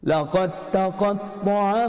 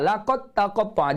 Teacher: Huruf dal itu ditiadakan, dianggap tidak ada dalam bacaan. Tidak dianggap ada dalam bacaan walaupun ada pada tulisan. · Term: idgham mutajanisain